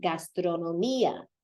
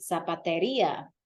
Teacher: anytime you have that accented I, it lifts on that sound